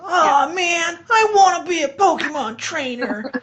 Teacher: they always go really high and then add like tons of vocal fry.